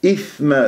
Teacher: ثاء ساكنه و مخرج ضعيف لازم انا ابين جريان الصوت والنفس حتى اسمعها